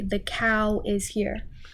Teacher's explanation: And so we're just going to make an extra w sound